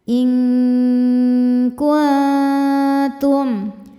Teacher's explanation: Karena nun sukun bertemu huruf kaf. Cara bacanya nun disamarkan ke kaf disertai dengung. Dengungnya besar karena kaf makhrajnya jauh dari nun. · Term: ikhfa hakiki ab'ad